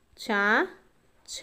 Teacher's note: దవడ భాగంతో పుట్టే అక్షరాలను తాలవ్యాలు అనేసి పిలుస్తామండి